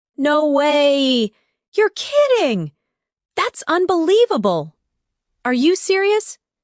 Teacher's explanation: Feel the rise in your voice when you express surprise.